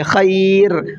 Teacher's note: خیر یہاں پر دیکھیے راد و پیش رن ہے، لیکن وقف کی علامت پائی جا رہی ہے، تو یہاں پر ہم آیت کریں گے، جب آیت کریں گے تو را کو ساکن کر دیں گے، خیر، اور را پھر پر نہیں پڑھی جائے گی، را باریک پڑھی جائے گی۔